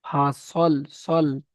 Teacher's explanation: সদটা হচ্ছে পুরো অক্ষর, তো এখানে মুখ গোল করে বলতে হবে